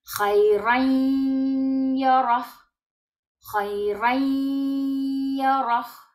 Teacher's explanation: Y vamos a saltar desde el sonido de la vocal del tanwin a la próxima letra. Y en la próxima letra damos como si tuviera shadda y damos sonido nasal. Entonces vamos desde la fatha hasta la ya. · Y ahí damos la gunna en la ya. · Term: idgham con gunna